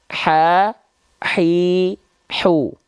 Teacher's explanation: hak kecilnya bisa seperti itu tepat lafalkan tekan bagian tengah tenggorokannya alirkan bisikannya dulu sedikit baru keluarkan vokal a i u-nya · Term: H kecil